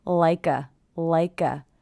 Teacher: i hear the k linking to the schwa